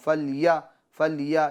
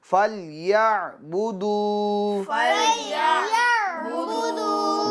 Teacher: عین کو واضح طور پر ادا کریں گے، عین کی آواز نکالیں گے، درمیان حلق سے ادا کریں گے، ٹھیک ہے. حمزہ کی آواز نہ آنے پائے، اس طور پر جیسے میں پڑھ کے بتاتا ہوں.